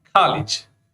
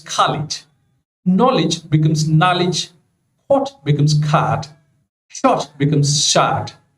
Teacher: the back rounded vowel shifts to back unrounded vowel. Now, this is a technical term, but in simple words, I can tell you O of British, O sound of British becomes A sound of American.